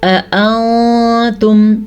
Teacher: اانتم نون ساکن کے بعد تا حروف اخفا میں سے آیا ہوا ہے تو یہاں پہ نون ساکن کو ہم چھپا کے پڑھیں گے، غنے کے ساتھ پڑھیں گے